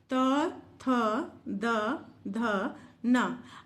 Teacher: आपकी जो जीभ है वो आपके दांत को स्पर्श कर रही है। बोल के देखिए, दांत को स्पर्श कर रही है, इसीलिए इसका नाम रखा गया दंत्य।